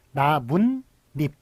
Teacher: 이건 니은이 덧붙는 것이네요. 나뭇잎은.